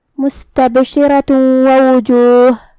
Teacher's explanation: پھر حرف الواو ہے کلمت وجوہ میں، تو ہم یہ آیت کو اگلی آیت کے ساتھ ملا کے پڑھے تو یہاں حکم ہوگا ادغام بغنہ، تو ہم یہ حکم کو غنہ اور تشدید کے ساتھ ادا کریں گے